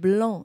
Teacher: it's a nasal sound the A and the N are combined